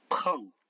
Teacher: Le P, qui est comme un P français, mais expiré